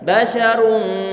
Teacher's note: Ada dhammah. Maka ra-nya kita monyongkan di saat mengucapkannya.